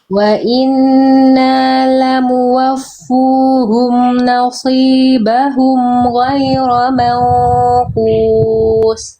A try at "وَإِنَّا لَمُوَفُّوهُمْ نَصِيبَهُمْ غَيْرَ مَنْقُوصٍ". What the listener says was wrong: Tebalkan shotnya. Mangkus. Nah, tebalkan. Lidah apa pangkal lidahnya kurang naik itu.